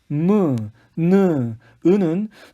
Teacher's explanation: 코로 공기를 내보내면서 나는 소리다